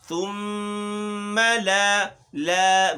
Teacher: ثم باریک ہے، میم میں تشدید ہے اور غنہ پڑھنا ہے. میم و نون مشدد ہوں گے جہاں کہیں وہاں غنہ ہوگا.